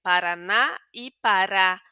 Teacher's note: la A con la tilde ya sabemos que además de tener el fonema abierto, nos va a contar que es la sílaba más fuerte